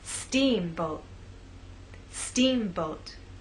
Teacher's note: think about making the first part at a higher pitch so our voice will be higher at the beginning and lower in the second part · making the first part of the word louder, longer, and at a higher pitch. Steamboat. Steamboat. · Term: word stress